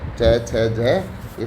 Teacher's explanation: च, छ, ज स्पर्श संघर्षी व्यंजन है